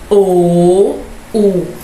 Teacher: ela vai se recuando em busca do véu do paladar, o posterior da língua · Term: posteriores ou velares